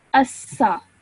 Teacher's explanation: with this sin you only keep it for 1 second because it has a simple fatha